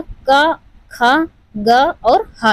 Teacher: छोटा का, खा, ग और हा, ये कंठ से उच्चारित होते हैं